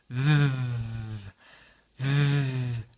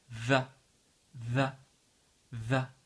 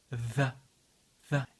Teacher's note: remarquez que la langue est entre les dents